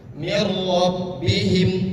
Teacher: Nun sukun bertemu dengan ro. Adapun ro adalah huruf idgham bila gunah.